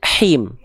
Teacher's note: H kecil. Dilafalkan dari tengah tenggorokan, berbisik nafasnya